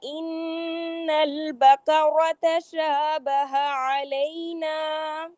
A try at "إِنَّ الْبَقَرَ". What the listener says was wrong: ان البقرہ، قاف موٹا.